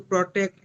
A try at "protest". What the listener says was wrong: Protest. Protest. Protest. Not protect. Protest.